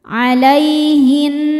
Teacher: Cara bacanya alif lam lewat masuk langsung ke nun dimasukkan disebut dengan idgham syamsi